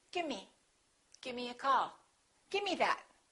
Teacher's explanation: With give me, sometimes you will hear people say gimme. Instead of the V, they just drop the V.